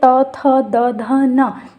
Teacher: आपकी ज़बान जो है वो टच कर रही है किसको, आपके दांतों को। इसीलिए इन व्यंजन को बोला जाता है दंत और इसका उच्चारण स्थान है दांत।